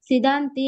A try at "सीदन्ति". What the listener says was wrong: ಮಮ ಗಾತ್ರಾಣಿ ಅಲ್ಲಿ ಸಿ ದೀರ್ಘ ಇದೆ, ಸಿದಂತಿ ಅಲ್ಲ, ಸೀದಂತಿ ಮಮ ಗಾತ್ರಾಣಿ.